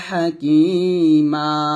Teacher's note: দুই জবর থাকে তাহলে সেখানে ওটা সাকিন হবে না সেখানে আমরা একটা জবর বাদ দিব মনে মনে আরেকটা জবর রেখে এক পরিমাণ টেনে পড়বো